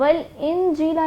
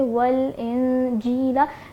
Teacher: جو نون کا ساؤنڈ ہے یہاں پر ہم غنہ کر رہے ہیں. تو نون ساکن کے بعد جیم آ رہا ہے جو کہ حروف اخفا میں آتا ہے.